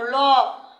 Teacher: পার্শ্বিক বর্ণ, ল, মানে সাইড থেকে, জিহ্বার সাইড থেকে উচ্চারণ হচ্ছে